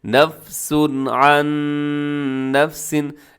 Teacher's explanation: اظہار حلقی ہو رہا ہے، یعنی اپنے غنہ نہیں کرنا، تیزی سے پڑھنا ہے